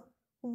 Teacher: वकार जो होता है उसका उच्चारण स्थान क्या है दंत ओष है